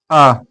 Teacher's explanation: मध्य स्वर जो मुख के बीच के हिस्से से बोले जाएं